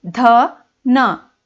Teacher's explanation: आप बिना दांतों को जीभ टच करते हुए इन्हें नहीं बोल पाते, इसलिए हम इसे दंत वर्ण कहते हैं